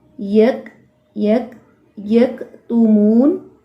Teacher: تو کاف باریک کے اندر بھی ہمس موجود ہے